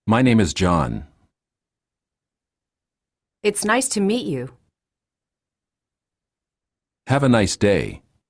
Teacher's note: Okay, when we say a monotonous person, a monotonous speech, means that I use just one tone or the same pitch all over my speech, like this. Lower your voice at the end of the sentence to produce a falling intonation. I didn't change my pitch at all.